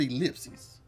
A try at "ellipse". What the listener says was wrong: You're saying ellipses. It's ellipse. Ellipse.